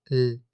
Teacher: Escucha la lateral velarizada, L, la llamada L oscura.